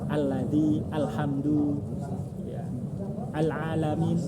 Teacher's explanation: Huruf lam selain di lafdzul jalalah semuanya tipis. Semuanya muraqqabah.